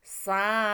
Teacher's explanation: Dalam satu kata, perhatikan, dalam satu kata itu satu arti, satu pengertian, gitu ya. Maka dibaca panjang 6 harokat atau 6 ketukan. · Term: mad wajib